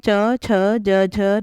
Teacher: इन वर्णों का उच्चारण तालु स्थान से होता है